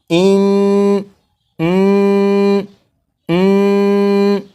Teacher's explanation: गुन्ना का माना है नाक में आवाज़ ले जाना।